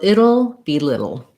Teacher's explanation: They both have that syllabic or dark L sound.